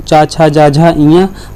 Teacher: तो चा वर्ग का उच्चारण स्थान कहाँ से होता है, तालु से होता है